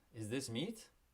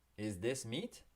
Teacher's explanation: just by raising your intonation like that it's going to become a question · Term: raise your intonation